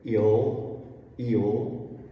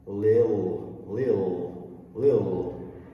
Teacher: instead of from a to ul, you're going from I to ul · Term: dark L